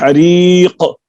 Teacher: تیسری صفت شدت ہے، شدت کے معنی سختی کے ہیں، اس کے ادا کرتے وقت آواز مخرج میں ایسی سختی کے ساتھ ٹھہرتی ہے کہ بند ہو جاتی ہے